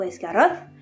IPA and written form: ɛsgarɔθ (Esgaroth)